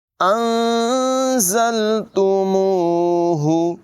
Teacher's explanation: हा की आवाज़ हलक के निचले हिस्से से अदा होगी।